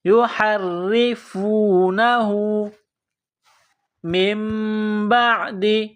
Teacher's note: ثم یحرفونہ، ہا کو را کے ساتھ پلس کرنا ہے، را کے نیچے زیر ہے، را کو باریک کرنا ہے۔